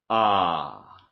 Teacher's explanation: /a:/ is low and in the back.